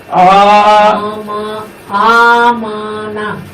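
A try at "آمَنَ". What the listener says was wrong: আমানা আটা একটু লম্বা হয়ে যেত আর উপরে আলিফের উপরে একটা খাড়া জবর আছে রুম বলতেছে রুম বল কি বলো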